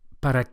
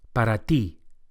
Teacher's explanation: the Spanish T is also softer than English and produced with the flat of the tongue against the gum Ridge